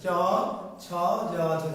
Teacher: কিন্তু জিহ্বার মধ্য অংশটা চ ছ জ ঝ, জিহ্বাটা উঠে গিয়ে কি জিহ্বার মাঝের অংশটা তালুর সাথে স্পর্শ করছে। তাহলে বর্ণগুলির নাম তালু।